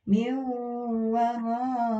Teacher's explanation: wawu tasydidnya bertemu dengan atau didahului oleh nun sakinah atau nun sukun, maka ini harus ditahan 2 harokat.